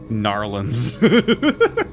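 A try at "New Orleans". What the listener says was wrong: Not Narlins. There's no R. It's Nolins.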